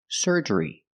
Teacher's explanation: And a long E at the end, like green beans.